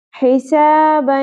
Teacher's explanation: دو زبر تنوین کے بعد یمنو میں سے یا آ گیا، کیا ہوگا یہاں پر ادغام مع الغنہ، ملاتے ہوئے پڑھنا ہے دونوں ساؤنڈز کو اور ناک میں آواز کو تھوڑی دیر کے لیے ہولڈ بھی رکھنا ہے